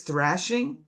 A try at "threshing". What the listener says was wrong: Threshing, not thrashing. Hopefully I put an E, not an A in there. I didn't put a U in there. Threshing.